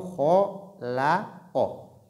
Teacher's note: Ici la lettre lam est entre deux lettres emphatiques, kha et qa. Donc, faire beaucoup attention pour ne pas que la lettre lam soit aussi emphatique. Donc, on ne dit pas kholo, kholoko, mais plutôt kholako.